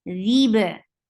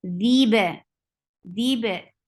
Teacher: Whenever they come with sukoon, it gets qalqala, and qalqala is taba'ud. Like you close the makhraj very tightly and then you open little, that will create qalqala